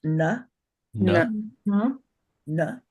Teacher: The fourth varga is dental, so that's na